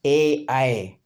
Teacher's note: ए आय का उच्चारण स्थान आता है कंठ और ताल